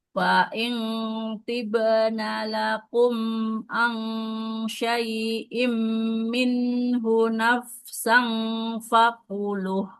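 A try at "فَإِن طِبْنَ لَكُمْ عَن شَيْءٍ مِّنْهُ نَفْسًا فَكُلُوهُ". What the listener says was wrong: Nafsang, jangan nafsang, kan sesuaikan dengan makhraj huruf fa-nya. Fa kan makhrajnya bukan di dalam ya, di depan. Bibir bawahnya menempel ke ujung gigi seri atas. Jadi kalau ikhfa itu dia kita sudah siap-siap ke makhraj yang di depannya, makhraj huruf yang diikhfakannya. Nafsang fakuluh.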